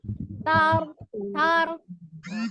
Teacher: Ada ro sukun sebelumnya fathah, tebal, bukan takrirnya tapi tidak berlebih, tidak tar sekali.